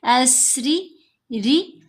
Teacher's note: دوسری بات یہ کہ را کو موٹا نہیں کرنا، را کے نیچے جب زیر ہو تو را کو باریک پڑھا جاتا ہے